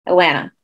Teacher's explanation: When you're a local, the last T, so Atlanta is spelled A-T-L-A-N-T-A. Last T is silent if you're a local.